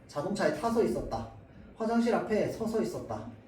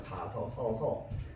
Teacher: 서서 있었다 자 그래서 표기 상으로도 아랑 어는 그냥 탈락해 버리고요 발음 상으로도 아 어는 그냥 탈락한 채로 원래는 뭐 이 아아 두 개인데요 둘 중에 하나는 그냥 없어져 버립니다